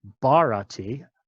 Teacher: again with a puff of breath in for that first character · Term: aspirated stops